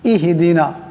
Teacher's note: এখানে ইহ ছোট হা আছে, বড় হার মতন উচ্চারণ করা যাবে না।